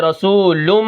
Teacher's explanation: میں ادغام کروں گا، لام کو میم کے ساتھ ملا دوں گا۔ ادغام کا مطلب داخل کرنا، ایک حرف کو دوسرے میں جب میں داخل کروں گا، جیسے رسولم، ٹھیک ہے، میم میں داخل ہو جائے گا، من اللہ، پھر یہ میم اپنی حرکت کے موافق پڑھی جائے گی، کیونکہ اس کے اوپر تشدید ہے۔